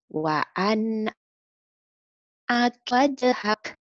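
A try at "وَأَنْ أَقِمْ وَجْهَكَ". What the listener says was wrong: ulang sekali lagi tengahnya hilang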